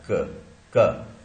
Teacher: This produces क आप बोल के देखिए, क साउंड आपको पता लगेगा कि क में टिप ऑफ द टंग या ब्लेड ऑफ द टंग या सेंटर ऑफ द टंग का कोई उपयोग नहीं हो रहा है, बैक ऑफ द टंग हो रहा है, जो कि सॉफ्ट पैलेट से जाके चिपकता है और क बनाता क। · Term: वेलर